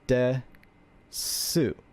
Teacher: This is the hiragana for te, but since we have the ten in the right corner here, we know that it's voiced, which turns the T sound into a D sound, so we have de.